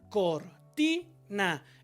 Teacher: Son aquellas que el acento, o sea la sílaba tónica, se encuentra en la segunda sílaba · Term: palabras graves